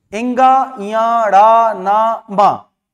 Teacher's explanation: जब आप इनका उच्चारण करेंगे तो प्राणवायु मुख के साथ साथ नाक से भी निकलेगी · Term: पंचमाक्षर